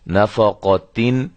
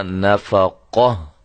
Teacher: اب ہم اس پہ وقف کرنا چاہتے ہیں تو اس کا طریقہ کار کیا ہوگا کہ اس گولتا کو ہم ختم کر کے صرف ہا اور وہ بھی ساکنہ ہم لگا دیں گے. گولتا کو ہائے ساکنہ میں تبدیل کر دیں گے